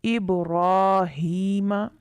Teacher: ابراہیم، یہاں را پر کھڑا زبر، اس وجہ سے را کو پر پڑھیں گے